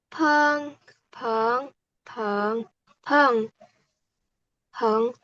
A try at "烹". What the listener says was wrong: 很好哇，发音很好，udah tepat semua ya。谢谢